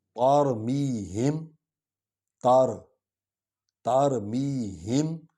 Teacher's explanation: تے کو میم میں ڈالیں گے کیونکہ میم پر شد ہے